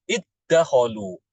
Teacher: dalnya hilang dalnya hilang masuk ke dalam huruf Dal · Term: idgham